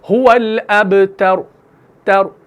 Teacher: आखिर में ये जो उ का साउंड है ना, पेश का साउंड, ये आपने हल्का सा अदा करना है। एक होता है मुकम्मल साकिन करना, हुवल अबतर तर तर, एक होता है हुवल अबतर तर तर, और आखिर में उ का साउंड यानी पेश का साउंड निकालना, ये होता है रौम के साथ वक्फ करना।